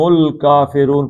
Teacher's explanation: رو دو حرکتیں تھیں لیکن یہ نون جو ہے یہ ساکن ہو گیا عارضی طور پہ، تو یہ 5 حرکتیں کھینچ دیں گے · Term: مد بدل